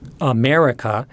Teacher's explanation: there are many english words such as america that have a bump in pitch in the middle of the word